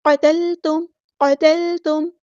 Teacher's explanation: میم ساکن پر یہاں پہ اظہار شفوی ہو رہا ہے، ٹائم نہیں دینا. قتلتم نہیں پڑھنا.